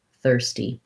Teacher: thur is stressed in this word and then ste is light and unstressed basically it has a tense eval thirsty um is that making